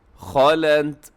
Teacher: خا موٹا، لام تا دونوں باریک ہیں، تا کے اندر تھوڑی صفت ہمس جو ہے اس کا بھی خیال رکھیے گا۔